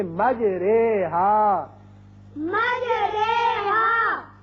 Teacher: اب قرآن پاک میں ایک ایسا لفظ ہے، اصل میں یہ ہے مجراہا، اور یہاں امالے کا قاعدہ یہ ہے کہ ہم زبر کو زیر کی طرف مائل کر کے پڑھیں گے. جیسے اردو میں ہم قطرے یا سویرے، جو رے کے نیچے زیر لگ کے آواز نکلتی ہے یہاں وہ نکلے گی.